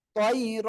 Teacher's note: তৈরান না পড়ে আমরা তৈর এক আলিফ টেনে পড়বো